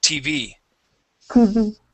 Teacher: we want to say TV, adding the stress to the end